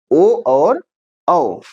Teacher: कंठ और ओठ से एक साथ उच्चारित होने वाले यही 2 वर्ण हैं